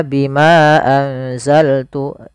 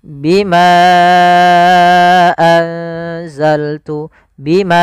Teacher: maka Bimanya kita panjangkan sepanjang empat harakat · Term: Mad Jaiz munfasil